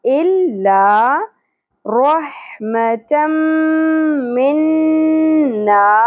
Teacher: इल ला, लाम के ऊपर तशदीद है, इला नहीं पढ़ना, इल्ला रहमतम मिन्ना, रॉ पुर अदा होगी, हा वस्ते हलक से, मीम की ज़बर को ज़्यादा नहीं खींचना, 2 ज़बर तनवीन की बाद हरूफ यमनू में से मीम आ रहा है, इदगाम मअल गुन्ना करना है, ज़बर के साथ अलिफ, हरफ मद्दा 1 अलिफ के बराबर खींचना है।